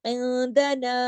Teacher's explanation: اخفا تھوڑی سی آواز کو ناک میں چھپایا. عندنا, اب نون الف زبر نا, پورا یہاں پہ الف مد کا کام کر رہا ہے نا, عندنا پورا اس کو پڑھا جائے گا, لیکن اس کو ہیوی نہیں کرنا, موٹا نہیں کرنا, باریک ہے یہ. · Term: اخفا حقیقی